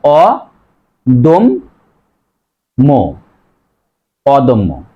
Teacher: তাছাড়াও আমরা একটা জিনিস জেনেছি যে শব্দের মাঝে বা শেষে যদি জফলা থাকে, জফলাযুক্ত বর্ণটি দ্বিত্ব হয়, দুইবার হয়